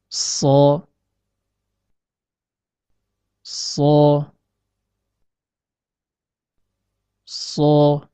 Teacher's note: Selain huruf shad, pada makhraj ini juga keluar huruf zai dan sin. Huruf shad dapat dibedakan dari huruf zai dan huruf sin dengan sifat al-isti'la, yaitu naiknya suara ke arah langit-langit atas. Atau dengan kata lain, dibaca tafkhim.